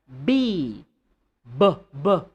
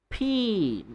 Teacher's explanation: you're not using your voice, you're just using some air in your mouth, your lips, and your mouth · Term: unvoiced